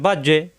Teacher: আর বা এর মাখরাজ দুই ঠোঁট থেকে